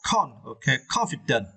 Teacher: you need to stress the first syllable, con. Okay, confident.